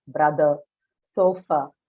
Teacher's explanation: vowels uh because we are discussing stress keep in mind that the schwa vowel that you have in the English vowel system is unstressed